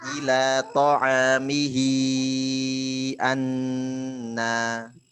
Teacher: I-nya panjang 4 atau 5. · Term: kubro atau tawilah